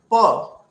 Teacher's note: In pa, as used in pantalon, the resonance is lower.